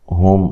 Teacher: ہا کو واضح نکالنا ہے، میم ساکن کا یہاں اظہار ہے